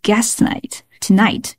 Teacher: t 结尾 t 开头，这里只读一个 t